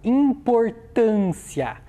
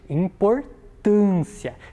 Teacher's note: Qual é a sílaba mais forte dessa palavra? É a sílaba tan.